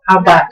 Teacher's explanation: vokal diakhiri dengan T ketutup, ya, grafonnya itu menjadi D.